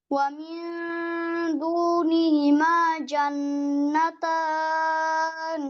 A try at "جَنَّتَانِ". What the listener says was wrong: জিমটা জিমটা আরেকটু পিছনে, মধ্যখানে জিব্বাটা জা, জান্নাতান, এই যে এই আওয়াজ না আসে, হ্যাঁ, জিব্বার টিপ থেকে যেন না হয়, middle of the tongue. So জান্নাতান।